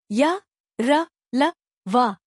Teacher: इनके उच्चारण में वायु का अवरोध बहुत कम समय के लिए होता है। जिन व्यंजनों के उच्चारण में जीभ मुख के किसी भी भाग को पूरी तरह स्पर्श नहीं करती है वे अंतस्थ व्यंजन कहलाते हैं।